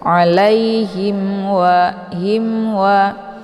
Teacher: sukun bertemu dengan wau ini dinamakan dengan izhar syafawi cara bacanya mimnya dibunyikan secara jelas atau jelas bunyi m-nya ditekan saja tidak perlu ditahan